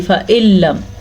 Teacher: دیکھیں اب نون کو آواز ہی نہیں آ رہی، فَإِلَّمْ حمزہ کو ڈائریکٹ لام سے جوڑ دیا. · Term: ادغام بلا غنہ